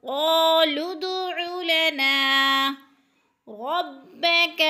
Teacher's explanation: قالوا ادع لنا، عین کو گلے سے حلق سے، علنا، نا پہ الف مدہ ہو رہا ہے، ایک الف کے برابر کھینچ کر پڑھنا ہے نا کو